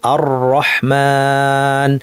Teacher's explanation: আর আর ভুল, চানাচুরালার আওয়াজটা ভুল, আর এটা না, কিন্তু কারণ এটা বারবার বাড়ি খাচ্ছে জিব্বাটা, এটা ঠিক না। কিন্তু আর শুরুতে একবার কাঁপবে, তারপর আস্তে আস্তে যদি লম্বা করেন মিলিয়ে যাবে। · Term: জিহ্বার কম্পন